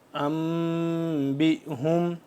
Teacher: نون ساکن اور تنوین اور میم ساکن جس کے بعد با ہو کی آواز کو ناک میں پڑھنا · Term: اخفا